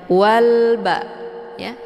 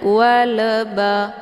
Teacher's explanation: alif lamnya dibunyikan secara jelas atau jelas bunyi L-nya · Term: alif lam al-qamariyah